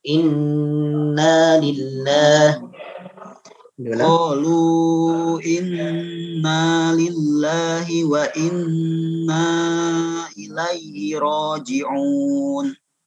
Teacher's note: Qalu inna, nunnya 2 harakat.